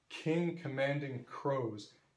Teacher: you cannot use the C in commanding to alliterate with these two words because it's not on a stressed syllable